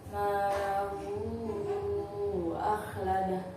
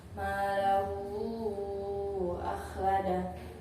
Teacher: Contoh malahu akhladah, di situ ada hadomir. Di situ ada mad silah bertemu dengan hamzah, maka cara bacanya panjang. Panjangnya 3 alif atau 6 harakat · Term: mad silah tawilah